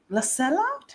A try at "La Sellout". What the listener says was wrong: I think the T is silent.